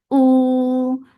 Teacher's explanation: Oo, for the circle lips. And hamza is very sharp. Make it 2 counts long.